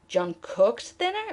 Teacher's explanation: John cooked dinner? But now we want to emphasize the action of cooking. So we're going to now emphasize the word cooked. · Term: prominence